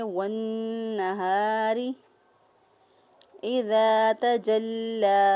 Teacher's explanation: را کے نیچے زیر ہے، را کے نیچے زیر ہو تو را کو باریک پڑھتے ہیں